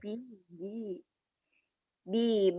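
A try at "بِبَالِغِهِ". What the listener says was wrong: Itu ada titiknya, ghin. Bibalighihi.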